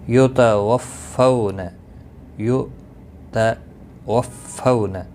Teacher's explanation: فو واولین ہے، تھوڑا نرمی کے ساتھ کھینچ کر ادا کریں گے